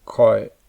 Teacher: In this example, the word koi begins with a high-class consonant, ka, and has a long vowel, a, and ends with a nasal consonant, nya. However, since there is a tone marker, maito, this would be a low-falling tone